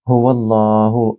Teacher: اللہ سبحانہ و تعالیٰ کے نام سے پہلے یہاں فتح یعنی زبر ہے، تو یہاں لام کو تھوڑا پر یا موٹا پڑھا جائے گا